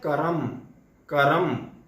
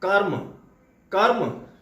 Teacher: मतलब बिना स्वर के हम र का उच्चारण करते हैं। और इस प्रकार से कर्म, इसका मतलब होता है, इससे एक बात और स्पष्ट होती है कि र जिस वर्ण के ऊपर प्रयुक्त हुआ है उसका उच्चारण उस वर्ण के पहले होता है।